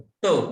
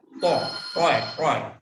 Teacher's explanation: जिभेचा पुढचं टोक हे दातांना न लावता दातांच्या मागची जी अल्व्हेओलर रिज आहे त्याला लावायचं, म्हणजे मग तिचा उच्चार होतो.